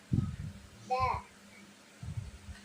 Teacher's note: நுனிநாக்கு அல்லது தலைப்பகுதி மேல்முன் பற்களின் உட்புற வேரை தொடும்போது வெளியாகும்